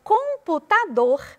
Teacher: Na palavra computador, a última sílaba é a sílaba tônica.